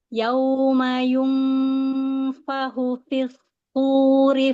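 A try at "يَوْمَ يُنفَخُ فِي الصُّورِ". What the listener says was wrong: Hu-nya coba tebalkan lagi. Yauma yunfahu. Tebalkan lagi, angkat pangkal lidahnya ya.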